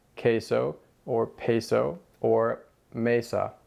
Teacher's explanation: Let's start with the letter E. A lot of people take the E sound and add an extra Y to it